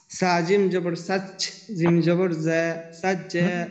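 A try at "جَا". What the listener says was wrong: জিম জিম জবর যা জিমের সাথে আলিফ আছে না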